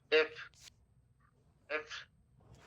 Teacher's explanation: তাহলে উপরের দাঁতের পার্টিটা টাচ করবে তোমার নিচের ঠোঁটের আগে আগে টাচ করবে। আর যখন ওটা টাচ করবে যে সাউন্ডটা আসবে সেটা হচ্ছে এফ সাউন্ড।